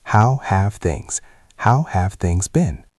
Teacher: We connect them. The v in have connects to the th in things.